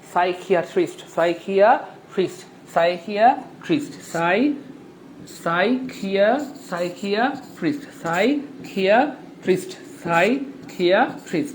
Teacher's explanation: P S Y একসাথে থাকলে পি এর উচ্চারণ হয় না